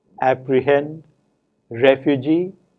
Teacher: we have two stresses one on the final syllable and another on the first syllable